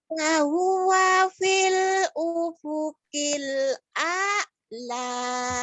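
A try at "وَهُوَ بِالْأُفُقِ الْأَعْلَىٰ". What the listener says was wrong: Bukan pil ya, tapi bil. Wahuwa bil ufukil a'la. Wahuwa bil ufukil a'la.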